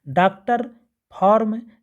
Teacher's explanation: यह जो ध्वनि है वह आ और ओ की मध्यवर्ती है तथा इन दोनों से इतनी अलग है कि इसके लिए विशेष संकेत होना ही चाहिए।